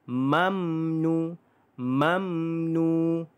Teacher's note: dibaca pula dengan panjangnya dua harokat